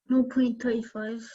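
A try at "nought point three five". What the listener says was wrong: No point, man. Now 0.35 is a common answer. There's no such number in the world called 0.35. You must pronounce each digit individually after the decimal point.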